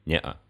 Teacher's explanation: обозначает гортанную смычку, то есть тот звук, который мы произносим между гласными, когда говорим «не-а»